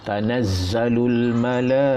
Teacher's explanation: Tanazzalul, zai ada sabdu, tanazzalul mala, jadi mak wajib tu ya, mak wajib 4 atau 5 harakat juga lah, panjang sikit.